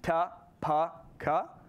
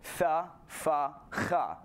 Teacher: So we have an initial thing where in Indo-European, the stops, the sounds that have a stop of air in your mouth, ta, pa, ka, all became fricative. So tha, fa, cha.